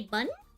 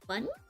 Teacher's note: When I say bun, you notice how like my voice goes up like bun? So when you see the up line, you have it go up.